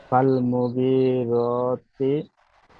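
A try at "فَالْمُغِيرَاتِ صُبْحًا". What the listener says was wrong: সুবহা। তুব নই, সদ বাপে সুব। সুব। সুবহা। ফালাম জবর ফাল।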